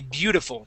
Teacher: So, instead of saying beautiful, okay, you can change that T to a D and say beautiful